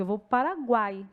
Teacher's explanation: Porque eu não falo que eu vou para o Paraguai, eu falo que eu vou para o Paraguai. Então, eu faço uma emenda de som que o A sai mais forte. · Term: tritongo